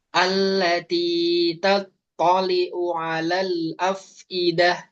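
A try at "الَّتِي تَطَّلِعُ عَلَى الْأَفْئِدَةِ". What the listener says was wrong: Tapi coba ainnya itu diperjelas juga. Di sini ada ain, ada dua. Ya, tattali'u. Itu ada dhammah, ada fathah. Coba diperjelas.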